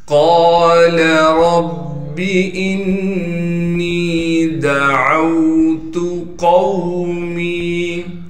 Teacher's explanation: دال کو باریک کر کے پڑھیں گے، عین کو آگے واو ساکن سے ملائیں گے اور عین کو صاف کر کے گلے سے نکالیں گے۔ تا کو باریک کر کے بغیر کھینچے پڑھیں گے۔